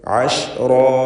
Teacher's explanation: റായിനും അലിഫിനും തഫ്ഖീം ഉണ്ടായിരിക്കണം. റാ എന്ന് സ്വരഭാരത്തോടെ ഉച്ചരിക്കുക.